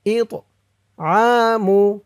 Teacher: তোটা কলকলার হরফ ধাক্কা দিয়ে পড়তে হবে